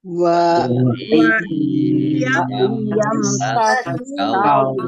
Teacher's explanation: nun sukun bertemu dengan huruf ya, bacaan idgham bi gunnah masuk dengan mendengung, yaitu mendengung ya, ditekan dan ditahan biar tampak mendengungnya.